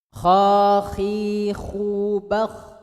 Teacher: Angkat pangkal lidahnya ke langit karena sifatnya isti'la, tebal. Khakhi, kha-nya harus ngorok.